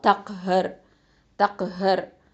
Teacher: ஹ வந்து நடுத்தொண்டையிலேருந்து வரணும். இந்த ரா சுக்கூன் இந்த இதை வந்து நம்ம ஹெவியாக தஃபீமாக தான் ஓதணும். ஏன்னா முன்னாடி உள்ள எழுத்தில் ஃபத்ஹா இருக்குது.